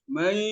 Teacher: Kalau baru mai yasya itu baru satu proses namanya, proses hanya memasukkan saja, hanya meleburkan suara nun ke dalam suara ya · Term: dengung